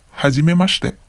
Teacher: notice that the I in the shi syllables becomes silent